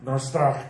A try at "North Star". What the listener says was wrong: No. Last little bit. It's really important. The inflection and the tone is pivotal to this.